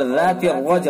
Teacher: را پر ہوگا، جیم کے اندر قلقلہ ہوگا